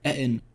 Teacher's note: I'm going to be saying it with a glottal stop the entire episode, by the way, because I think it's just fun.